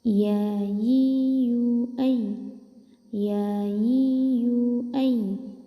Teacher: bagian tengah lidah menempel ke langit-langit bagian atas